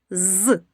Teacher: Чуємо і шум, і голос. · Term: дзвінко